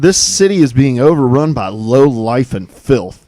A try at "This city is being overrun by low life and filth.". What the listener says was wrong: You need to be more dramatic. Deeper voice. Sound like you've been smoking.